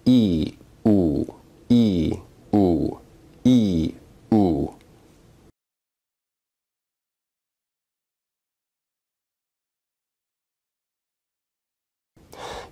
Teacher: If you say these vowels in succession, you may notice that your tongue is moving forward and backward as you say e u e